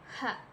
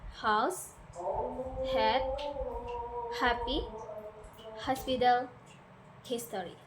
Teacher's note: Air passes through your glottis, creating friction without using your vocal cords.